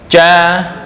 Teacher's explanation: Jim itu di tengah lidah. Nah, ini jim. Ja dengan langit-langit atas.